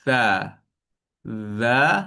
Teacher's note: hujung lidah kita dia pergi ke hujung gigi kacip atas sini